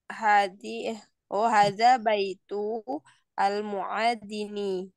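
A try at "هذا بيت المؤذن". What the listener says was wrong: Disambung saja bacanya hada baitul muadzini.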